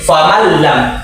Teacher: Contoh di huruf yang bilagun di huruf lam yang ada di Al-Qur'an yakni famallam dia tidak ada dengung sukun itu langsung dileburkan dengan bersatu dengan lam